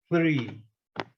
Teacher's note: 3 é o sinal da língua entre os dentes, né? E aquele sopro.